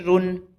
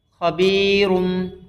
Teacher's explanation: تنوین کے بعد با آیا ہے تو خبیرن سے کیا ہوگا؟ خبیرم۔